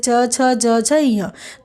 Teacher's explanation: बात करें च वर्ग की जैसे च छ ज छ य तो इन सब का उच्चारण स्थान है तालू